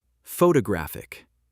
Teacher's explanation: Photographic. Stress moved to third syllable.